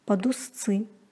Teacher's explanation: З-д-ц произносится как с-ц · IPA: [padustsy]